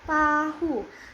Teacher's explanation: bunyi letup apikodental dengan lidah menyentuh gigi atas seperti pada kata tahu